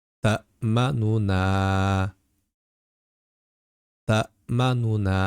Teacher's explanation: o'rtadagi nu degan qismini tez va ovozni biroz sekinlatgan holatda aytiladi, tilga yengilroq bo'lishi uchun. Ya'ni ta'manuna ta'manuna singari. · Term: ravm qoidasi